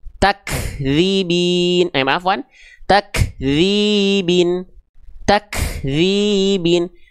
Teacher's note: dilafalkan percikan nafasnya ada tapi justru terlalu berlebihan